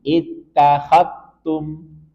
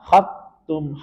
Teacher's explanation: dal sukun bertemu dengan ta, maka langsung masukkan ke ta. Sehingga seolah-olah zalnya hilang. · Khattum, jangan sampai ada suara za.